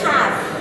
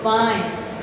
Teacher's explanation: The labial dental has to do with the contact between the lower lip and the upper teeth.